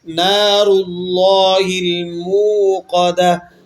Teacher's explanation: را بھی موٹا ہوگا اور لفظ اللہ بھی موٹا ہو کر پڑھا جائے گا